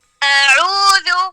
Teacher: حمزہ بالکل نرم ہے عین میں ہم نے تھوڑا سا زور لگانا ہے